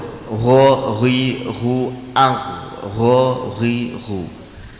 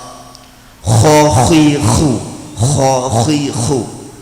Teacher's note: Puncak tenggorokan atau tenggorokan bagian atas menjadi makhrajnya huruf gho dan koho ada dua ya kalau gho tidak boleh mendengkur gho gi ghu